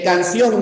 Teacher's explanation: En canción no, porque la fuerza de voz está en la O, en la abierta